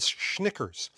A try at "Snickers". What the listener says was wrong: I'm sorry, did he say Schnickers? All right, I don't think that's how it's pronounced, but whatever.